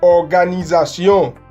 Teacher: Es una O con los labios extendidos, Organisation, U, que se escribe O-U, pero se pronuncia como U simplemente.